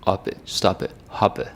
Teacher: the P is not so pronounced. It almost sounds like a B